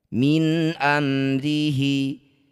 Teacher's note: Nun sukun bertemu hamzah disebut bacaan namanya izhar halqi. Baca jelas bunyi nun tanpa dengung. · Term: idhar halqi